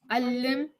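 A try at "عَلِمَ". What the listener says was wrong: No, there's no shadda. Alima. Alima. They didn't put the last haraka because they expect you to know that.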